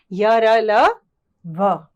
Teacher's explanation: इनका उच्चारण करते समय जीभ मुख के किसी भी भाग को पूरी तरह स्पर्श नहीं करती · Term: अंतस्थ